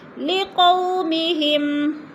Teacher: لقو پہ وولین ہو رہا ہے، وولین کو لمبا بھی نہیں کرنا اور جھٹکا بھی نہیں دینا